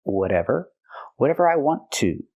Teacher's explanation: We hear the T in whatever pronounced as a fast D because it's between vowels.